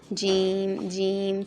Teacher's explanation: اور پھر آ گیا ہے جیم، جیم، جیم کے نیچے جب کسرہ ہوتی ہے تب خاص طور پہ خیال رکھنا ہے اس کے کہ اس کو جھی یا چی نہیں بنانا ہے، ٹھیک ہے. جیم کا مخرج وہی ہے جو شین کا ہے کہ زبان کے درمیانی حصہ کو لگانا ہے ہم نے کہاں سے، اوپر پیلیٹ سے، اس کے اپوزٹ جو پیلیٹ ہے، جیم جیم، ٹھیک ہے.